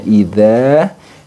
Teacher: idza dia harus memiliki sifat yang namanya rakhaah dan letaknya pada ujung lidah yang bertemu dengan gigi seri atas bagi gigi seri bagian atas ujung gigi seri bagian atas kemudian